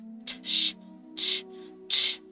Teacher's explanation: our ch sound and our j sound in English is actually two sounds put together. Ch is actually a T and an SH